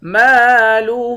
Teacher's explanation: مالہ، میم کے بعد الف ہے، الف حروف مدہ ہے، ایک الف کی مقدار کھینچ کر پڑھتے ہیں۔ ہاں کے اوپر الٹا پیش ہے، الٹا پیش کو بھی ایک الف کی مقدار کھینچ کر پڑھتے ہیں۔